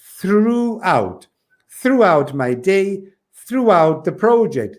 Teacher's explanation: o throughout tem aquela coisa da língua entre os dentes e soprar um pouquinho. Aquela coisinha que você sabe para falar TH em inglês, precisa fazer isso.